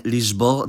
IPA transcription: liʒˈbɔʁ̞